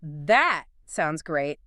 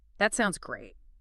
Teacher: if you deliver that sounds great with a flat falling pitch, you are signaling sarcasm or deep reluctance